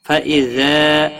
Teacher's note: الف مدہ ہے، ایک الف کے برابر کھینچ کر پڑھیں گے